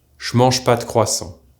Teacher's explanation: our preposition de will almost always end up being a single, barely audible d